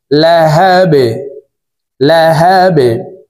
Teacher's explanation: বা যেহেতু কলকলার হরফ নিচের দিকে ধাবিত করে ধাক্কা দিয়ে সাকিন করব।